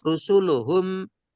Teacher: Rusuluhum memnya nempel, itu namanya syafawi.